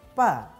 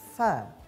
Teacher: posisi huruf fa yaitu perut bibir bawah dirapatkan dengan ujung gigi seri yang atas. · Huruf fa yaitu tidak melibatkan sepenuhnya dua bibir.